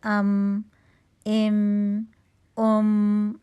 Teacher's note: जब दोनों हंठों को बा की निस्बत कम कुत से मिलाएंगे तो हर्फ मीम अदा होगा।